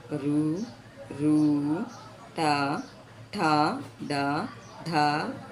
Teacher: నాలుకతో గట్టిగా అంగిలిని తాకుతూ పలికే అక్షరాలు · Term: మూర్ధన్యాలు